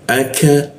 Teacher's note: Di siku tenggorokan. Lidahnya kita turunkan sehingga ada hembusan udara ketika membaca ka